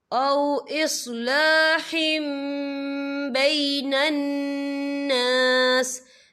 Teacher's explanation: الا من امر بصدقۃ او معروف او اصلاح بین الناس، یا دیکھیں او اصلاح، ہا کے نیچے تنوین ہے، تنوین کے بعد جو ہے با آ رہا ہے، تو یہاں پر انقلاب ہوگا یعنی تبدیلی ہوگی، تو ہم یہاں میم کا تلفظ کریں گے اور ہم یہاں غنہ بھی کریں گے